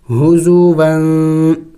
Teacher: تنوین ہے، اخفا کریں گے یعنی ناک میں آواز چھپانا ہوگا